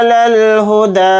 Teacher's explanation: لام کو لام ساکن کے ساتھ ملا کر پڑھیں گے، ہا کو جلدی پڑھیں گے، دال کے اوپر کھڑا زبر ہے، دال کو تھوڑا کھینچ کر پڑھیں گے، ایک الف کی مقدار